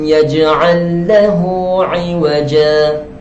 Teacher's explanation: Macam mana nak kenal maksilah qasirah? Ha dhamir bertemu dengan huruf selain hamzah, selain hamzah, maka dia dinamakan mad dhamir, mad silah qasirah. Itu dibaca dengan kadar 2 harakat.